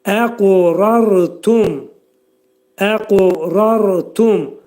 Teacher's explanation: Sükunlu ra qalın oxunacaq · Qaf hərfini qəlqələ edərkən qaf azcıq uya meyilli.